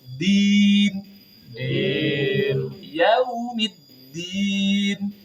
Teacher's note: Jadi dalnya jangan sampai keluar nafas.